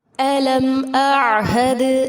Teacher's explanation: علم اعہد میم ساکن کے بعد حمزہ ہے، یہاں اظہار شفوی ہوگا. حمزہ اور عین میں فرق کو واضح کرنا ہے. عین کو وسط حلق سے ادا کیا جائے گا، دال ساکن پر قلقلہ ہوگا.